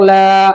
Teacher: جب لام کھڑا زبر لا بولیں گے تو پتلا کریں گے لام کو